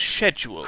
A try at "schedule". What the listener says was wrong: There is no K. Mm. No K in schedule, what are you talking